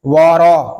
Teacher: یہاں را کو بھی پر پڑھیں گے کیونکہ را کے اوپر زبر آ گیا ہے ، وارا، اس کو وارا نہیں پڑھیں گے، وارا، ورایتن نا،